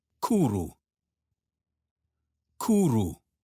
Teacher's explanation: W. In Welsh words, you should think of this as a vowel. W sounds like oo in moon.